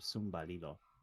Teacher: But there's also a variant that's older, sumbalilo, which you can see they've added a vowel to break up the consonant cluster, and then the R has kind of like lambdacized. It's become an L.